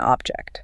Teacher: >> When we stress that first syllable, like an object, our mouth is more open, right? There's a deliberate push of air for that first syllable, it's like you're putting a heavy weight right at the start of the word.